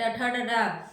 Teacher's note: मूर्धा से बोला जाता है